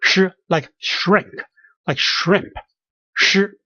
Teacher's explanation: And SH is also H in there, so we pronounce it as sh with tongue curled backward